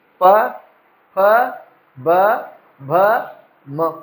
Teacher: द्व्योष्ठ्य कैसे, ये प वर्ग जो है, ये तो औष्ठ्य हैं, इनमें बिल्कुल जब तक दोनों होठ मिलेंगे नहीं, एक दूसरे से मिल नहीं जाएंगे, स्पर्श नहीं कर लेंगे, आप उच्चारण नहीं कर पाओगे प वर्ग का।